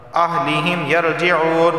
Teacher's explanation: واو سے پہلے پیش ہے، ایک الف کے برابر کھینچ کر پڑھا جائے گا